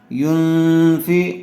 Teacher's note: نون ساکن کے بعد حروف اخفا میں سے فا آیا ہوا ہے، اس لیے غنّے کے ساتھ اخفا کر کے پڑھیں گے